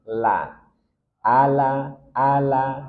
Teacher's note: Dari dua ujung sisi lidah hingga ke akhirnya atau ujungnya bertemu dengan gusi atas di hadapannya. La. Ala, ala, dan dia tarkik tipis. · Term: huruf lam